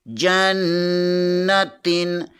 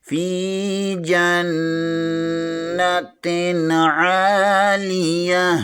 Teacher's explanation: جیم زبر کے آگے نون مشدد ہے، یہاں پر غنہ لازمی ہوگا۔ تا دو زیر کے آگے عین آ رہا ہے، عین حرف حلقی میں سے ہے، یہاں پر غنہ نہیں اظہار ہوگا۔